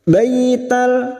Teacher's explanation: Batal baital fathah bertemu ya sukun, kita lunakkan